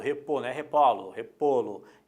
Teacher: acentuar de novo o timbre é fechado